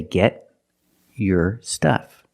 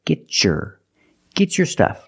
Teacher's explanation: If I separate, I can say get your stuff. But because I have a t before a y making the e sound, I can change the t to a chch sound like chicken and say get your get your stuff.